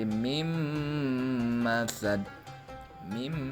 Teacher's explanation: mati bertemu dengan mim yang berharokat fathah ya yang dibacanya berarti meleburkan nun mati menjadi huruf mim lafalnya